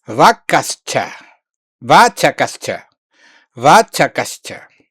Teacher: according to Sandhi rules, you have to transform visarga into sh and to join